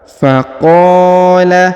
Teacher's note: Huruf qa dipanjangkan 2 harokat karena di depannya terdapat alif ya